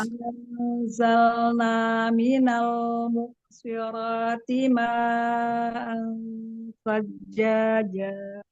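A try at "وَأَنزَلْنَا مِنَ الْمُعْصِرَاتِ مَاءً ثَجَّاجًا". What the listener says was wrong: Sekarang huruf ainnya kasih bainnya yang ain sukun. Minal mu'siro. Sotnya tebalkan. Minal mu'siroti ma'an sajjaja. Ya, lagi huruf ainnya, bainiyahnya di makhrajnya ya. Minal mu'si. Mu'sirati. Dari minal mu'sirati, pengen dilatih huruf ainnya. Ya, mu'siro, sotnya juga tebal kan? Mu'sirati. Jadi sot itu dia punya sifat isti'la, punya sifat itbaq.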